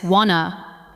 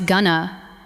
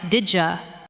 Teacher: want to is often heard as wanna, going to becomes gonna, and did you can sound like didja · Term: connected speech